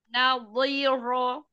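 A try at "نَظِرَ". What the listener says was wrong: Iya, tidak dijeda. Naziro, enggak. Naziro, tidak diputus-putus.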